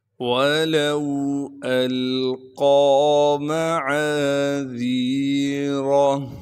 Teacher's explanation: عین کے بعد الف مدہ ہونے کی وجہ سے عین کو ایک الف کے مقدار کھینچیں گے۔ ذال کو باریک کر کے پڑھنا ہے، نرم کر کے پڑھیں گے